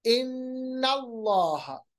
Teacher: अल्लाह लाम जलाला से पहले जबर, तो लाम जलाला मोटा